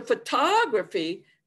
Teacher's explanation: i start off with the schwa i go to a strong stress major stress jumping out then to a schwa again unstressed